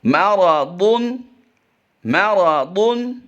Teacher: را اور ضاد کو پر کر کے پڑھیں گے